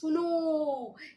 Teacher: फिर किसी को बुलाते हैं सुनो, ऐसे जो आवाज निकलती है ये प्लुत स्वर होता है